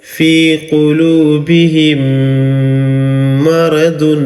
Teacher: اب دیکھیے یہاں پہ میم ساکن ہے اور میم ساکن کے بعد یہ میم آ گیا ہے، تو اس کے پڑھنے کا قاعدہ ہے ان دونوں میم کو مدغم کر دیں گے، ملا دیں گے. ٹھیک ہے، اور یہاں پر گننے کی آواز نکالیں گے